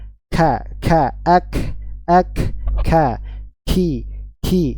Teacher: ada nafas yang mengalir kencang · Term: hamas